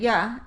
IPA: j